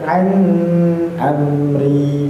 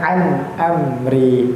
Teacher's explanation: Jelas di sana tidak ada ikhfa, tidak ada idgham. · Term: izhar